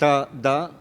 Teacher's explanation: ta, da are dental because I put the tip of the tongue back of my teeth